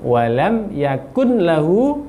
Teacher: masuk ke huruf lam karena idgham bila gunna. Walam yakul lahu, panjangkan hunya 2 harokat.